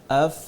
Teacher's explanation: ऊपर के दांत नीचे वाले होठ के अंदरूनी हिस्से पे लगाकर